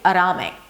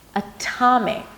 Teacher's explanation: Not only that it's not a flat T, it's actually a strong aspirated T with a little H after